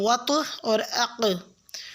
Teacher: وطعن کے طا ساکن پہ اور اقوام کے قاف ساکن پہ قلقلہ کریں گے